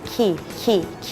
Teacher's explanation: ให้เหยียดริมฝีปากแล้วยกโคนลิ้นพร้อมพ่นลม